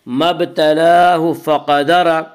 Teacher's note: قاف کو پر پڑھیں گے، قاف حروف مستعلیہ میں سے ہے۔